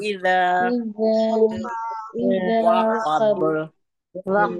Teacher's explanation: اذا زبان دیکھو ای نکال کے زبان کو اوپر کے دانتوں کے کنارے پہ رکھ دیجئے اور پھر ذال ادا کریے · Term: ذال کی ادائیگی